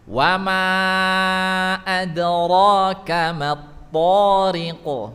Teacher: kalau ro ini suara ro-nya tebal ya, tafkhim